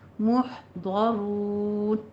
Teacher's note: را پر بھی ہے اور را کے بعد واو مدہ آ رہا ہے